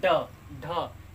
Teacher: जब हम जीभ को ऊपर भीतर की ओर तालू में टच करते हैं और कोई वर्ड बोले तो बहुत झटके के साथ वो बाहर निकलता है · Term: उत्क्षिप्त